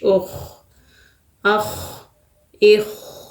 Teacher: خا موٹا کرنا ہے، حروف مستعلیہ میں سے ہے